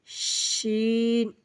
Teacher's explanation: জিহ্বার মাঝখান হইতে তার বরাবর উপরে তালুর সঙ্গে লাগাইয়া শিন, একটু মোটা করে বাতাস বের হবে